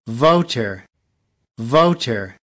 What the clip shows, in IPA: ˈvoʊ.t̬ɚ